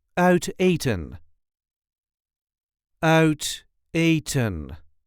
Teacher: There is a light emphasis on the first syllable of the second word.